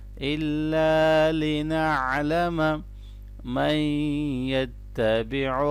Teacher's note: عین کو اچھی طرح سے گلے کے درمیان سے ادا کرنا ہے